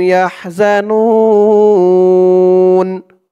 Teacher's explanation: পেশের পরে ওয়াও সাকিন এক আলিফ টানটা তিন আলিফ টান হয়ে যাবে নুন বলে তিন আলিফ টান দিয়ে এই নুন কে ধরতে হবে